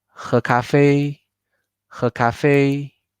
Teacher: It has to be something all together. And we have to make the middle one super fast and light. The first one, medium length. And the last one, much longer. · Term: medium, light, stress